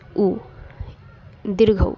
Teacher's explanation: जीभ के पश्च भाग से उच्चारित होने वाला स्वर है उ, दीर्घऊ